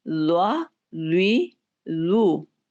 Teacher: ज़्वा को जब आप पढ़ेंगे तो इसको आप गोल भी करेंगे, ज़्वा, ज़्वी, ज़ू।